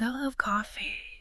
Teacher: a totally different meaning depending on which word you stress right if you stress love I love coffee then you're really emphasizing your feelings